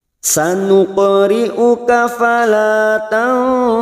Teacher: nun sukun bertemu Sin ikhfa Hakiki kita samarkan bunyi nun sukun